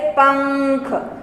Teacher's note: जो अनुस्वार होता है उसको हम नाक की सहायता से बोलते हैं